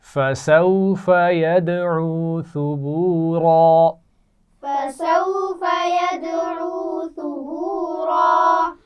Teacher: اور ثبورا آخر میں را ہے، موٹی پڑھی جائے گی